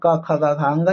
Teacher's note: ख का उच्चारण क ख ग घ यानी कि कंठ से होता है